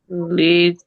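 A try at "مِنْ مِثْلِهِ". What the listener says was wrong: li he is ha, not ti.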